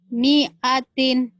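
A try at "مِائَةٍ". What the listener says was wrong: Ini mi-nya pendek. Mi'atin. Coba.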